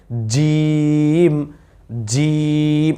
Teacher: বলতে হবে জিম, জিম। একটু শক্ত করে, জিব্বাটা মোটা করে, জিব্বার মধ্যখানটা উপরের তালুর সাথে লাগাই দিলেই ইনশাল্লাহ জিমের উচ্চারণ সুন্দর হয়ে যাবে